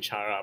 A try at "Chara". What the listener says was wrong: Technically, it's supposed to be pronounced as Kare, because character. Or Kara.